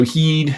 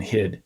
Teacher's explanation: heed should sound longer than hid